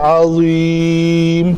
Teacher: ولہم عین, عین کی ادائیگی پتلے حروف میں سے ہے. عذاب عظیم, اس عین کے بعد پتلی کر کے ساتھ ہی ضا جو ہے وہ موٹا ہے